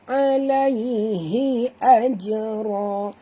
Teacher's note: Huruf jim bila dia mati di tengah-tengah kalimah, sahabat semua kita kena lantunkan dia. Qalqalah sughra.